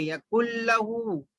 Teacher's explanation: نون کے بعد لام آیا تو نون کو نہیں پڑھیں گے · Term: ادغام بلا غنہ